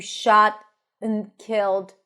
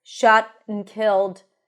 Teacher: the end connects the two words, shot and killed, and it's reduced to a schwa